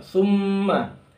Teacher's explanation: mimnya musyaddadah, dia dibaca dengan gunnah, dengung